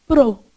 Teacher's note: E esse O aqui, ele é um arredondado. Então, você fecha a boca, vibra a língua e produz um O arredondado.